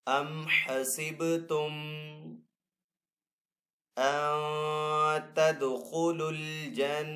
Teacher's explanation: نون ساکن ہے، نون ساکن کے بعد آگے تا حروف اخفا میں سے، تو یہاں پہ اخفا والا غنہ کریں گے۔ اخفا کا مطلب ہوتا ہے چھپانا، جب نون ساکن کے اوپر یہاں پہ ہم غنہ کریں گے تو نون کو یہاں پہ چھپا کر ادا کریں گے۔